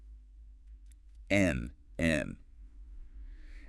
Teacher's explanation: Your mouth is mostly closed, right? So the sound has to come out through the nose. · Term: nasal sound